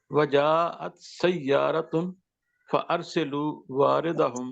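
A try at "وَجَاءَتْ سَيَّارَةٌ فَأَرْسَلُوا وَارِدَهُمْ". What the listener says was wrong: نہیں سین کے اوپر جمع کریے نا سر. سین کے اوپر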